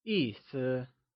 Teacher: 意 is pronounced using a falling tone and 思 is pronounced using a neutral, soft fading tone